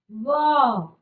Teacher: नीचे वाला ओष्ठ और ऊपर वाले दांत जब हमारे टच होते हैं, तब हम इनको उच्चारण कर पाते हैं। व, ऊपर वाले दांत टच हो रहे नीचे के ओष्ठों पर। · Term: दंतोष्ठ